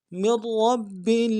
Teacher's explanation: تنزیل من رب میم کو آگے را کے ساتھ ملانا ہے، نون کے ساتھ نہیں ملائیں گے، را کے اوپر تشدید زور دیں گے اور را کو موٹا ادا کریں گے